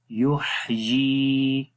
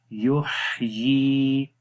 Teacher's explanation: जब हा के ऊपर जज़म हो तो हा में सांस जारी रहता है, ये इसकी सिफ्त है, रखावत भी हो जाएगी।